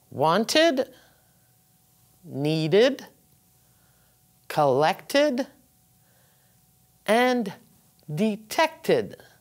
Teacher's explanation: And this is because the words finish with T and D. You pronounce id.